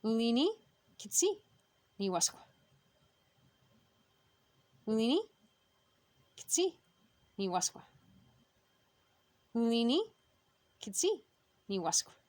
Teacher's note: I'm hoping that you're hearing that W is almost silent